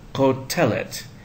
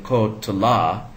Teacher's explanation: the accent is now not on the last syllable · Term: penultimate syllable